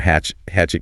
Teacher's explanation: a hatchet usually has a stop T sound